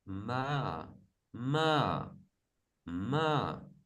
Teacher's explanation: Now the high tone sorry the falling tone is quite much the opposite of the rising tone. So it start a bit higher goes even higher than it start and then swiftly go down